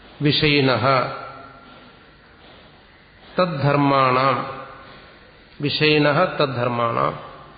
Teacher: സകാരത്തിന് ശേഷം തകാരം വന്നു കഴിഞ്ഞാൽ നമ്മൾ പിരിക്കുമ്പം ആ സകാരത്തിന്റെ സ്ഥാനത്ത് വിസർഗം ഉച്ചരിച്ചാൽ മതി. വിസർഗം ഉച്ചരിക്കുന്നത് സാധാരണ ഹ എന്ന് ഉച്ചരിക്കും. ശരിക്കും ഹ എന്നുള്ള ഉച്ചാരണമല്ല, പക്ഷെ നമുക്കങ്ങനെ ഉച്ചരിക്കാൻ പറ്റും.